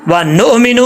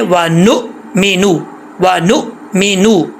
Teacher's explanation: व नु मीनू, व नु मीनू, नो भी नहीं पढ़ना, नून के ऊपर पेश है, नून पेश नू होता है, नो नहीं होता।